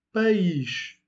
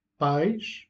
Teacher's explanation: País, c'est un hiatus. País, qui veut dire pays. Pais, c'est une diphtongue